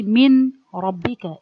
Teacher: If I say min, that means I pronounce the noon from its articulation point.